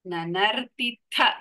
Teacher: third is only ತಕಾರ ನನರ್ತಿಥ last ಥ ಇಸ್ ಮಹಾಪ್ರಾಣ